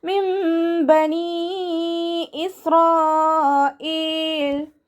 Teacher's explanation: നൂൻ സാക്കിനയെ മീമാക്കി മാറ്റി മറിച്ചിട്ട് ഒന്നയോടുകൂടി ഓതി കൊടുക്കുക. നൂനിൻ്റെ സൗണ്ടിന് അവിടെ കേൾക്കേയില്ല. മീമാക്കി മാറ്റി മറിക്കും ചെയ്യുക. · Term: ഇഖ്ലാബിൻ്റെ മീമ്